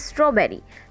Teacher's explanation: Straw is stressed while bear and re is unstressed.